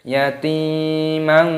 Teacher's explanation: Alam yajidka yatiman, taknya dipanjangkan ada ya sukun. Yatimang, fathah tanwin bertemu dengan fa hukumnya dibaca ikhfa disamarkan.